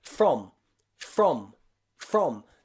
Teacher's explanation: r so we don't say f rom we say from okay that f and the r almost become one sound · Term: fr sound